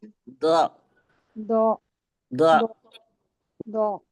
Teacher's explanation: जबान की नोक को हमने ऊपर के दांतों की जड़ में लगाया · जबान की जो करवट है उसको जी हमें ऊपर की बाईं तरफ या दाईं तरफ की दाढ़ों के मसूड़ों से लगाना है